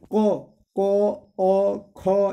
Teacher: क, ख, ये सब जो है कंठ से निकलता है